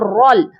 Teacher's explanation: را کو لام مشدد کے ساتھ ملائیں گے، اور را کو موٹا کر کے بھی پڑھا جائے گا۔